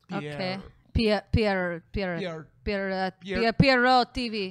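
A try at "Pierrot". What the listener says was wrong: Well, if it's French, you don't pronounce the T.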